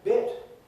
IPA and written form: bet (bat)